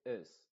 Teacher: la i y esta I se pronuncia como una e ya no se pronuncia como una I bastante Clara sino que se pronuncia como una e pero muy apagada en español no puede ser una e como e no así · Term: sonido modificado de la i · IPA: /ɪz/